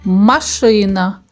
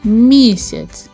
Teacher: ми вимовляємо звук м повітря зустрічає перешкоду тому звук м приголосний звук м може бути твердим наприклад машина або може бути м'яким наприклад місяць